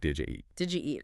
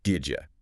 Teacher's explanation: The D at the end of did and the Y sound at the beginning of you fuse together. Did you? It's a very, very standard connection in spoken English.